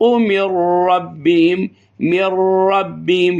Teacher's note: نون کے بعد را ہے تو ہم نے نون کو نہیں پڑھنا بلکہ را کو پڑھنا ہے، من ربهم نہ کہ من ربهم. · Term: ادغام